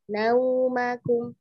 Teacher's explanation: Iya, karena huruf waw. Iya, pokoknya tajamkan u, jangan mendekati o